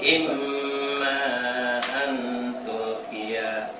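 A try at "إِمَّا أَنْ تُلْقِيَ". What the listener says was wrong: Yang panjangnya, yang panjang sama ikhfanya kurang. Imma panjang itu ya. Nun sukun ketemu ta itu apa?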